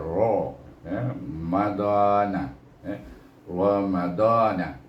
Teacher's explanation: ra ni baris atas baca dengan tebal